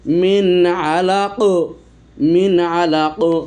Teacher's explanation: কফ কলকলা হরফ, এই জন্য কলকলা কুবরা, বড় ধরনের কলকলা হবে আয়াতের শেষেরটাতে